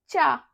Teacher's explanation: हमारी जीभ है वो अपने तलवे को स्पर्श कर रही